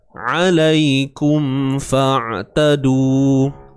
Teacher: huruf ain sempit bahagian tengah kerongkong kita